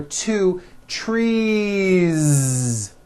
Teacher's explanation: It's not trees with an unvoiced S. It's trees with that voiced ending.